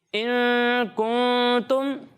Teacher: ٹھیک ہے، اور غنہ کی مقدار 1 الف کے برابر ہوتی ہے. ٹھیک ہے، تو جہاں آپ غنہ کریں گے وہاں پر آپ 1 الف کی مقدار تک ناک میں آواز لے جا کر ادائیگی کریں گے